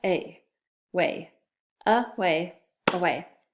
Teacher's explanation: so I know it starts with a schwa and then way